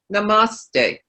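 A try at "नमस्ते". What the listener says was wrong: We say namaste. Yeah, the emphasis is not on the ma. Yeah, it's like it's not namaste. So it's not, you don't stretch the R after the M out. So it's just a shorter, yeah, that's the way they say it in India.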